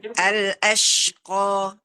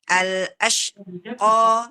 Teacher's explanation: Jadi ada tafasinya ash, kemudian dia juga ada suara yang keluar ya